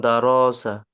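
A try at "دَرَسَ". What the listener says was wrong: র টান হয়ে যাচ্ছে। দারসা।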